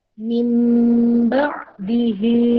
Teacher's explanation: Iqlab ini nun sukun atau tanwin bertemu 1 huruf, yaitu ba. Dibaca lebur menjadi seperti huruf mim.